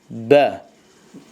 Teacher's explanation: Bəni dodağın yaş tərəfini bir-birinə möhkəm bir şəkildə vurmaqla çıxartmaq olar. O da bə, bu cür səslənir.